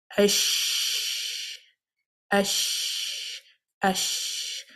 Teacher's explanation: Likewise, for the letter Sheen, there is a gap between the palate and the tongue. The breath and the sound runs through freely.